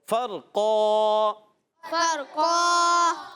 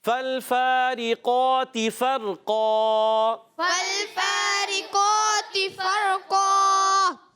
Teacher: دو زبر کی تنوین کو الف سے بدلیں گے مگر قاف کو موٹا بھی رکھیں گے، اس کے بعد جو الف پیدا ہو رہا ہے دو زبر کی تنوین کو الف سے بدل رہے ہیں وہ بھی موٹا، تو آواز آئے گی فرقا، فرقا، گڈ۔